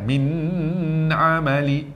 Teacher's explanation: Jangan lambat. Min amali. Dia lambat tu macam dengung dah, tak boleh. Min amali, pendek saja.